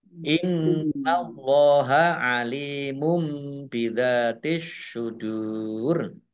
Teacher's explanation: Nun tasdid dibaca gunah atau mendengung, ditahan 2 harokat. Allahnya dibaca tebal karena harokat di depannya fathah. Innallaha lam fathah berdiri mat tobi'i.